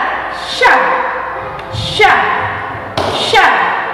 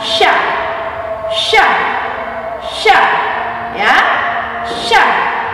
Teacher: mempertemukan lidah bagian tengah dengan langit-langit atas. Misalnya ya, sya, sya, sya ya, mempertemukan lidah bagian tengah, lidah bagian tengah dengan langit-langit bagian atas ya. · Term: huruf sya